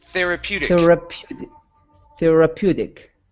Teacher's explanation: switch that t to a flap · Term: flap t